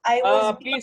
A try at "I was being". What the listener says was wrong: Please, don't say bye. Bye वाला मत बोलिए, ठीक है?